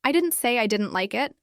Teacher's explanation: The stress on like signals a very specific point. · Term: contrastive stress